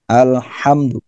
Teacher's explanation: a-nya terbuka dengan mulut terbuka, makhrajnya dari pangkal dari pangkal tenggorokan ya, tenggorokan paling dalam